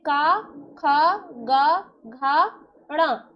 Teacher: का वर्ग के वर्णों का उच्चारण करेंगे तो यह कंठ से निकलेंगे, जैसे का, ख, ग, घ, ण। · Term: कंठ वर्ग